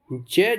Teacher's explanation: ज जो है स्पर्श संघर्षी है